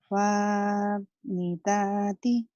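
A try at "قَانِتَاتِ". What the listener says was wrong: bukan fa tapi titiknya 2. Kenapa jadi fa? Qanitati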